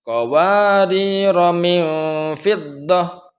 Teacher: Dalam lafaz qawadira ini kalau waqaf maka roknya dibaca panjang, sedangkan apabila diwasal dilanjutkan pada ayat setelahnya maka roknya dibaca pendek